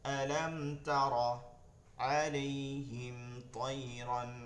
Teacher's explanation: মিম সাকিনের পর তা আসছে গুন্না ছাড়া। আলাম তারা আলাইহিম তায়রান, আলাইহিম তায়রান, হিম তাই, হিম তাই, দ্রুত পরবর্তী হরফে চলে যেতে হবে।